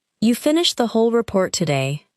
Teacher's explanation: The word whole may receive strong stress because the speaker is surprised that everything was completed.